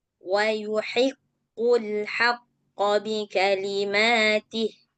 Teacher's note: Walaupun dia baris bawah eh penekanannya harus tetap kuat karena Q dan kafnya bertasdid